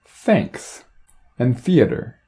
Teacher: the voiceless interdental fricative is produced with the tongue right behind or between the teeth the tongue is relaxed so that the air can flow between the teeth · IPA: θ